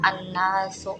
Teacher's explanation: maka dibaca dengan mendengung dan disebut dengan bacaan ghunnah